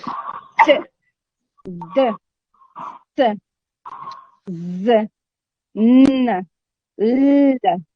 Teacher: you will find that the blade or the tip of the tongue is pressed against the alveolar ridge. Bearing in mind that the alveolar ridge is that part which is immediately behind the upper teeth. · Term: alveolars